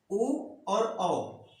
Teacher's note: तो कंठ और ओष्ठ से उच्चारित होने वाले अपने वर्ड हैं उ और औ। इनके उच्चारण का स्थान कंठ तथा ओष्ठ है, ये 2 जगह से उच्चारित किए जाते हैं।